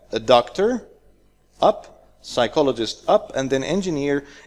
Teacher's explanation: when we have more than one choice we go down in the end of the choices